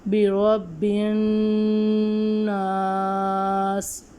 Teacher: نون مشدد پہ ہمیشہ غنہ ہوگا، اس لیے ہم اس نون کی آواز ناک میں سے نکالیں گے